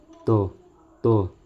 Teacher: त बोलते समय दांत को छूती है। देख लीजिए त बोलते हैं तो दांत को छू लेती है। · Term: स्पर्श व्यंजन